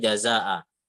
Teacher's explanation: ketika dia tanwin fathah dan waqaf maka dibaca mat iwat dua harokat ya. Kecuali tak marbutoh seperti itu.